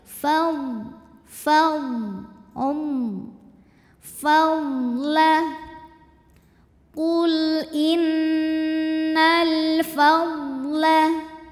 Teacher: ujung dua gigi Sari atas bertemu bibir bawah bagian basahnya Fa ada anginnya seperti huruf f